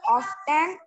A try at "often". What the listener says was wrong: Often no beta, it's often. It is often only. Okay, T is silent here.